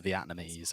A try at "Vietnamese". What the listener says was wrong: It's an E. It's not an A.